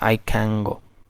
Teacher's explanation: The last sound is can is n sound, and the next sound g, is a velar sound. So due to the influence of g sound, this n sound, which is alveolar, it also becomes a velar nasal